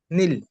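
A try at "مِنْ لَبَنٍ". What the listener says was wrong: হুম, নীল না, নিন, নুন দুজের নিন। মিল লাবা নিন, মিন পড়বেন না, ভুল হবে। মিল, মিম লাম জের মিল, মিল্লা, বা যাবার বা, নুন দুজের নিন। নুন দুজের মিল লাবা নিন।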